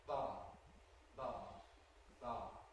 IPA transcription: b̥ɑ